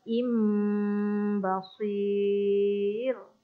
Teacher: Dan seterusnya panjang pada perkataan im basir. Perkataan basir perlu ditebalkan sebab ada huruf sad.